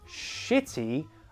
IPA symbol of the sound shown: ʃ